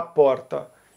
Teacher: em Goiás vai ser o r retroflexo